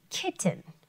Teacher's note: sometimes we don't hear the first T but it's there to protect the vowel sound